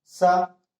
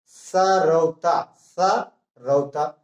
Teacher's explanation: ये सा दंती सा कहा जाता है क्योंकि इसमें दांत और जीभ दोनों टकराते हैं। जैसे सरौता, सरौता, तो दोनों हमारे आपस में टकरा गए।